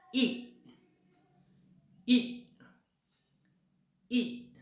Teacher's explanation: Round होतो का ओठांचा आकार? नाही. बघा, ई नाही, राऊंड नाही होत. · किती उंची आहे जिभेची? हाफ क्लोज पर्यंत जाते आपली जीभ.